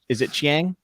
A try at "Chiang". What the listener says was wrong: It's Chiang, actually. That's what I've looked it up, and from what I can tell, it's pronounced like the I's not there.